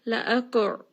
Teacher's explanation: ayn is going to be from the middle of the throat.